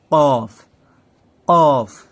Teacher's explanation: কফটা একটু ভিতর থেকে কণ্ঠনালী থেকে উচ্চারণটা হবে